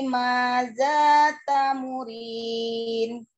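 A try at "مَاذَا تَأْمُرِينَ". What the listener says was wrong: Maza tamurin. Ada amzah sukun.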